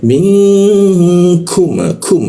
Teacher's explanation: lidahnya diturunkan sehingga rongga udara terbuka dan ada hembusan udaranya jadinya minkum kum ada udara yang keluar seperti itu ya.